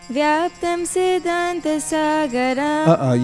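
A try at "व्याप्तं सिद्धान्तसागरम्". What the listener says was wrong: You can't end graha and sagaram on the same note. So tarinana mata graha has to be not that. You see, end on graha and end on sagaram, it sounds flat.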